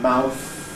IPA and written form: maʊθ (mouth)